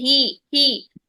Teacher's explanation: हे नहीं करना है, ही को, यानी हा की जो जेर है उसको ई की साउंड में रखना है, आपने ए की साउंड में नहीं लेके जाना